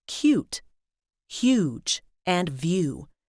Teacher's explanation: there's a double dip thong where the vowel comes between two semivowels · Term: fuchsia Cube